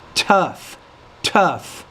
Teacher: have to pronounce the T with more air